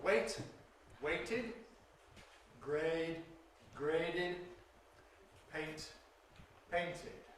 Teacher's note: When do we add an extra syllable? Well, for the past participle, past tense, it’s after [t] and [d].